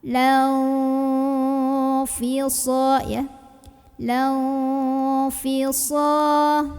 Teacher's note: Karena ada nun sukun yang ketemu sama huruf fa. Maka cara membacanya disamarkan sambil berdengung. Jadi pas bunyiin nun, siap-siap mau bunyiin fa. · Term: ikhfa ausat